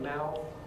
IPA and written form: mæʊθ (mouth)